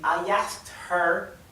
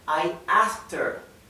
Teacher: la H suele no pronunciarse se pronuncia directamente como er